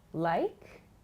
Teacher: I'm using an upward intonation, like, to ask for an example.